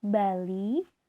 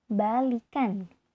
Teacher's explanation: Sebagai contoh, kata balik diucapkan bali, vokal i diucapkan i rendah, tetapi ketika mendapatkan sufiks an sehingga menjadi baikan, bunyi i berubah menjadi i tinggi